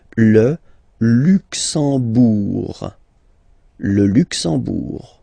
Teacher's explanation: You don't pronounce the M at all, it's this nasal en, okay?